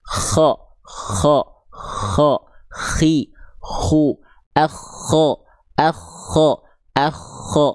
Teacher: huruf kha dilafalkan dari adnal halqi itu artinya adalah tenggorokan paling atas, atau tenggorokan bagian terluar dari tenggorokan kita, atau juga sering disebut dengan ujung tenggorokan.